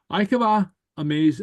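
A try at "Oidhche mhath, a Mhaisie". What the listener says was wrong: Remember the MH is pronounced like a V.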